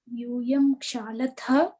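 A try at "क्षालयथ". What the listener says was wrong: Not Shalata. Yuyam Shalata. There's no word Shalata. Shalayata. Shalayata. Shalayati. Shalayataha. Shalayanti. Kriyapadam is Kshal and Shalayati. Not Kshalati. Kshalayati, Kshalayataha, Ksalayanti. It is not Kshalati, Kshalataha, Kshalanti. One more ya is there. Kshalayati.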